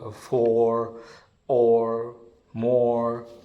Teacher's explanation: the half open back vowel